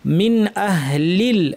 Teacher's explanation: এক্ষেত্রে দেখতে হবে পরের হরফ কি, যেহেতু পরের হরফ কণ্ঠনালীর হরফের একটি হামজা, সেই জন্য এই নুন সাকিনকে স্পষ্ট করে পড়তে হবে, যার নাম হচ্ছে ইজহার